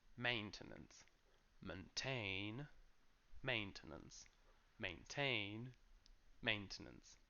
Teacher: the main stress so maintain maintain but what's interesting is that the noun has a completely different pronunciation so the main stress is in the first syllable which is still main but then we go main to nuns